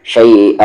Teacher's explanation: تنوین کے بعد واو ہے غنہ ہوگا